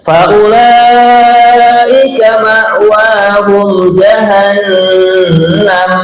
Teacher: di sini yang kita panjangkan kalimat ulaika, namanya mad wajib muttasil